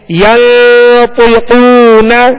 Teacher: طا اور قاف کو پر کرنا ہے، حروف مستعلیہ میں سے ہے